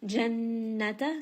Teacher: noon with shadda is going to have ghunna. Make sure you bring it up into the nose. Jannata, spend a bit of time on it as well.